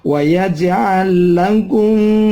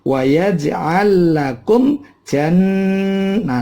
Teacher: Gunnah. Jan ditahan, boleh di atas 2 ketuk. Jannah matobi'i, ini 2 ketuk.